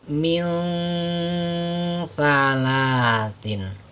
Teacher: maka dibacanya sedikit dipanjangkan, ya, kira-kira 2 harokat lah atau 2 ketukan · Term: ikhfa hakiki